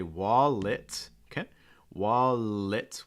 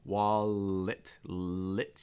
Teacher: wallet with a very clear light L